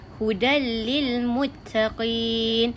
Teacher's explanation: Tanwin tu dimasukkan terus dalam bunyi lam tanpa ada dengung. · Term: idgham bila gunnah